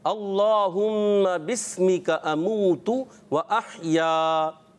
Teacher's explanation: हमज़ा वसली दरमियाने कलाम में आने की वजह से गिर जाता है, हज़फ हो जाता है